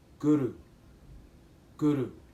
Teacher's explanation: you want to use your tongue and you want to strike the roof of the mouth right in back of the front teeth, and you want the R to kind of roll a bit